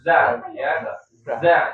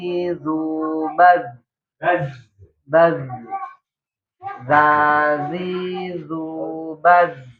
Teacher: Kuatnya suara karena keluar dari tempat yang sempit. Ya, jadi ciri khas zai itu bunyinya seperti ada bunyi desisnya itu lebah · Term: sofir